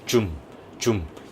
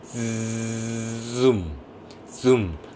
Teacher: 혀의 중간 부분이 입천장을 살짝 짚었다가 떨어집니다.